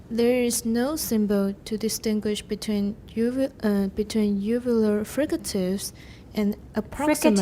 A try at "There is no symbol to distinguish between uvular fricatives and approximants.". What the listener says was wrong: Fricatives. Don't go down too low because we're comparing.